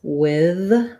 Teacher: word with uh some people pronounce that with a voiceless th many people will pronounce with with a voiced th